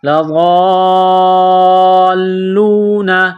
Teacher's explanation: لام کو تھوڑا دبائیں گے تشدید کی وجہ سے